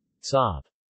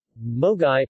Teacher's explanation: more or less 'o' as is in got, though more rounded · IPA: [o]